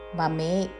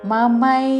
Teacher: మమై మా ఐత్వముతో మమే కాదు